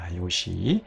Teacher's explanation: 이 뉘가 시그마와의 마찰을 견디지 못하고 탈락해서 아이오시가 된 거예요.